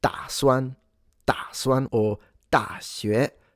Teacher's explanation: But if you say ta, like in da suan, or da xue, I'm really pronouncing a T. T is just that it has no aspiration